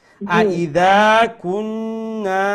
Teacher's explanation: দা এখানে লম্বা হবে, আলিফ মাদ্দা আছে না